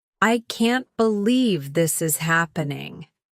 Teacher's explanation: Joy tone, bright, cheerful, with rising intonation.